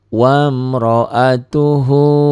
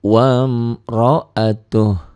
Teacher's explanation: jika dihentikan bunyinya wamro'atuh, u-nya hilang.